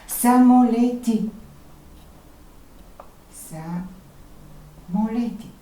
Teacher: гласната и ни помага да чуем много добре беззвучен съгласен т